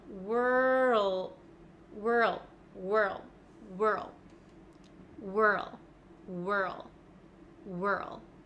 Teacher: I can feel my tongue sliding from the back to the front so from R to L